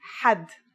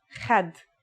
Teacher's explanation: It's also similar to the sound people make when they snore. According to phonetic charts, ha is pronounced in a deeper part of the throat than kha.